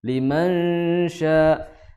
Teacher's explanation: Cara mengucapkan ikhfa itu bunyi gunahnya, ya, karena ikhfa itu kan suara samar, ya, suara samar yang disertai dengan gunah selama 2 harokat. Nah, yang menjadi permasalahan kita ketika gunah, ya, ketika menyamarkan suara samar tersebut selama 2 harokat, bunyinya dipengaruhi oleh huruf setelahnya.